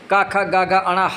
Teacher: तो अ जो है वह कंठ वर्ण स्वर है।